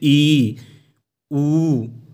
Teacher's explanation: संवृत, संवृत मतलब क्लोज होता है, इसको बोलने में मुंह आपको खोलने की ज़रूरत बहुत कम या ना के बराबर होती है